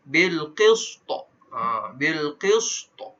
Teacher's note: bila mana ta itu qalqalah dan dia berhenti kat situ, kena bunyikan qalqalahnya.